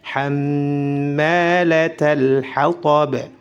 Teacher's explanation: Hammalatal, ma panjang, mim bertasydid, ditahan 2 harakat, baru dipanjangkan 2 harakat.